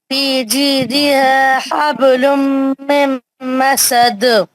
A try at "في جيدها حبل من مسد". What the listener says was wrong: बहुत अच्छा पढ़ा आपने।